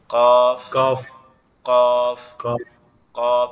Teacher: কফটা হচ্ছে আমাদের জিহ্বার গোড়া উপরের তালুর সঙ্গে লাগবে, লেগে উচ্চারিত হবে